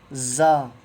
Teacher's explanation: جھنجھناہٹ جیسا آواز نکلنا چاہیے باہر